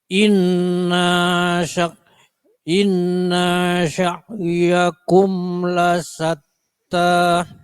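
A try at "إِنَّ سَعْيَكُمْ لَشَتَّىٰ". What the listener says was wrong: Innanya enggak boleh panjang.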